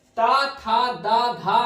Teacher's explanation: इस ता वर्ग में दंत थी संस्कृत में, और हिंदी में भी सारी जो है दंत हैं, केवल और केवल ना को छोड़ करके